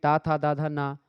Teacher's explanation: ता था दा धा ना यह सब आपके दंत हैं और ला भी दंत है